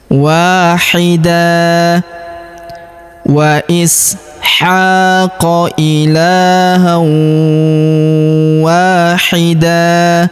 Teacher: Kemudian tanwin an berubah menjadi fathah dan kita panjangkan 2 harokat. Kita hilangkan tanwinnya ya, karena di depannya terdapat alif.